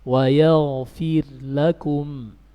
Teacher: Tapi kalau dibalik, ra sukun bertemu dengan lam tidak diidgham.